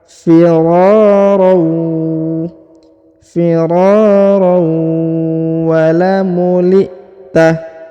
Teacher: Nah, perhatikan huruf tanwin bertemu dengan waw, ya, harokat an bertemu dengan waw yang berharokat tasdid, maka dia ditahan, ditekan, lalu didengungkan 2 harokat. · huruf ro dipanjangkan 2 harokat karena di depannya terdapat alif